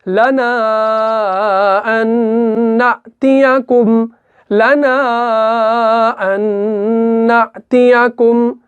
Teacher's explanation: ये नून साकिन जो है इस नून मुशद्दद के अंदर जो है मुदगम हो जाता है, तो इसी का नाम जो है इदगाम है।